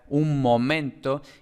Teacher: los artículos indefinidos son tónicos además tenemos que en principio pues tendríamos una asimilación de la n final con la siguiente nasal entonces tendría un momento y luego como ya hemos dicho algunas